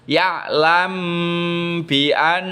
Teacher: dibaca samar antara mim dan ba dengan cara bibir ditahan selama 2 ketukan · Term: ikhfa syafawi